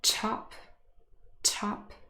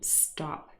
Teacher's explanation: the first example is aspirated, and the second one is unaspirated